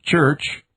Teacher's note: The heavily aspirated palatal sound